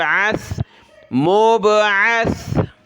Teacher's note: سا پر ہم نے زبان نکالنی ہے، سیٹی کی آواز نہیں آنی چاہیے سا پر